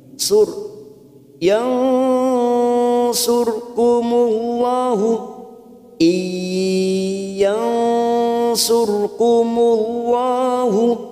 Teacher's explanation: Kita samarkan bunyi nun sukun 3 harokat. Yansur, ro sukun yang didahului dumah, kita baca tafkhim. Sur, yansurkumullahu, iyansurkumullahu, kumullahu, lam jalalah yang didahului dumah, kita baca tafkhim.